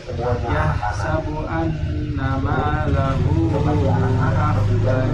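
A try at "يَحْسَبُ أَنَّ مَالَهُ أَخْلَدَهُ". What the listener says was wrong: Ya, gunahnya kurang. Yahsabu anna.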